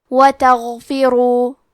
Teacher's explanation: کلمت تغفروا میں غین کی ادائیگی حلق کے اوپر والے حصے سے ہے. غین حروف تفخیم میں سے ہے تو ہم غین کو موٹی آواز میں پڑھیں گے.